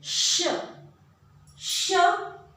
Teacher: इस श में जीभ तालु से, तालव्य से रगड़ती है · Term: तालव्य श